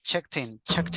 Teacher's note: we joined the last consonant pronunciation with the vowel